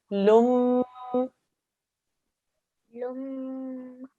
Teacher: Because this mushaddad letter is a meme, we'll make a 2-second nasal sound. So we'll actually say lum.